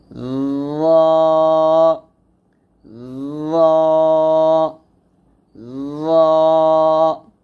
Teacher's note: জিহ্বার আগা সামনের উপরে দুইটার আগার সঙ্গে লাগিয়ে রটা মোটা করে বলতে হবে